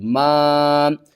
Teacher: چھوٹی مد ہے، تین الف کے برابر کھینچ کر پڑھیں گے